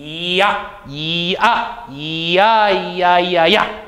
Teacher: 그리고 이 발음을 할 때 위치에 머무른다는 얘기는 이 하면서 아로 금방 넘어가야지만 야라고 하는 발음을 할 수 있다는 거죠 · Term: 미끄러지듯이 발음되는 모음, 반모음